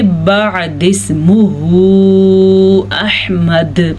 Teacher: وقف کی وجہ سے دال ساکن ہو گیا, جب دال ساکن ہو گیا تو قلقلہ ہو گیا